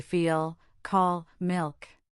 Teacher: For this sound, you make the same tent tip contact, but you also raise the back of your tongue towards the soft pallet, creating a thicker, more resonant sound. This dark L is used when L appears at the end of a word or before a consonant.